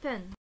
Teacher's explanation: in the front vowel the tongue is between half closed and half open lips are spread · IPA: /e/